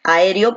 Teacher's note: la fuerza de voz recae aquí en la E